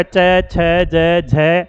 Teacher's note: च वर्ग को क्या कहा जाता है, यानी इनका उच्चारण करने में, स्पर्श करने में जीभ को संघर्ष करना पड़ता है, इसलिए इनको कहा जाता है स्पर्श संघर्षी वर्ण